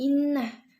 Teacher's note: terdapat hukum bacaan ghunnah cara baca didengungkan dan ditahan dua harokat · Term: gunnah